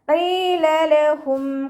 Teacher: ഖാഫിൻ്റെ കൂടെ യാമദ് വന്നു, അവിടെയും നമ്മൾ 2 കൗണ്ട് നീട്ടി ഉച്ചരിക്കുക